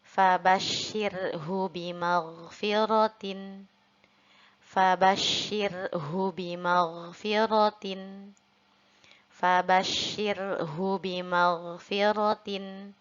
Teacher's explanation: untuk huruf ro-nya kita baca tarqiq karena sebelum huruf ro ada huruf yang berharokat kasroh